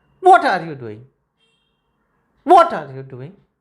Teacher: when you are going to end this question there should be a fall